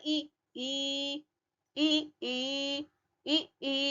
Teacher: आवृत्ता मुखी है, होठ गोल नहीं हो रहे हैं। यहाँ पर होठ गोल नहीं हो रहा है, आवृत्ता मुखी है।